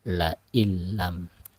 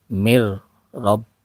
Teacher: Jadi nunnya dilebur ke dalam huruf lam, langsung ke dalam huruf lam, tidak dipanjangkan, langsung. Namanya idgham bila guna, masuk atau melebur nun ke dalam huruf berikutnya, tidak disertai dengan guna. La illam, ya, nunnya tidak terbaca, ya, la illam, ya, la illam.